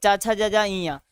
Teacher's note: च छ ज ज इया जो रहता है वह तालु से बोला जाता है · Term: तालव्य